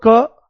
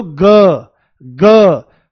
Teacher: आप बोलो क फ्लैट है, तुरंत बोलो ग ग क ग क ग, ग में झंझनाट हो जाती है पूरी। तो ये सघोष का मतलब है झंझनाट हो जाती है, कंपन हो जाता है ये।